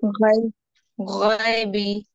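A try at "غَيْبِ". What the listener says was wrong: गए बोले तो मजहूल हो जाता, फिर वो अपने को मजहूल नहीं पढ़ना है, मारूफ पढ़ना है इसको। वही गए।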